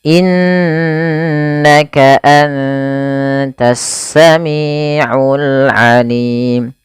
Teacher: tidak hanya cukup dibaca innaka, tapi perlu ditahan suara gunnahnya 2 harokat